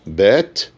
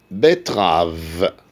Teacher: E est long dans bête, bref dans betterave.